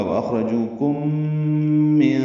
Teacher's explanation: وَأَخْرَجُوكُمْ، خا ساکن ہے اس لیے پر ہے اور اس پہ ہمس بھی ہے، را پر ہے، جو واو مدہ ہے، کم میں میم ساکن کے بعد میم آنے کی وجہ سے ادغام ہوگا، یہ ادغام شفوی ہے، غنہ ہوگا